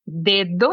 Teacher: Nosotros tenemos dedo en portugués, pero la segunda d es un poco más débil